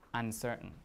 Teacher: it should be an n uncertain right because m only occurs before a bilabial and s is not bilabial · M only occurs before a bilabial, and S is not bilabial, okay? And number 2, unfathomable.